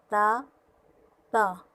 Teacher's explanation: تا پڑھتے ہوئے ہم زبان کی نوک سامنے والے دانتوں کی جڑ سے لگائیں گے تو تا ادا ہوگا